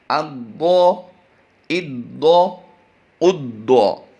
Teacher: ضاد حروف مستعلیہ سے ہے، اس کی ادائیگی ہم نے پر کرنی ہے